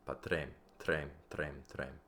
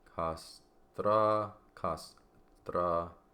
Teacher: the R, you're going to flip the R like a D sound, so it's behind the teeth. The T is behind the teeth.